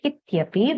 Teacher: Iti and api becomes ityapi, where the ikara has become ya.